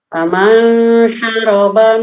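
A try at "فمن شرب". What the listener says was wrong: Faman syariba bukan syaraba tapi syariba.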